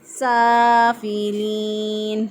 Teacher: پڑھیں گے، موٹا نہیں پڑھیں گے، سافلین، سین کھڑی زبر سا، الف کھڑی زبر جو ہوتی ہے وہ الف مدہ کے قائم مقام ہوتی ہے، اس لیے اس کو ایک الف کے برابر لمبا کر کے پڑھا ، سافلین، لام زیر یا لی، یا مدہ ہے، یا ساکن